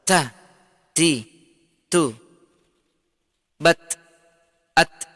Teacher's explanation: Ta disertai dengan hembusan udara.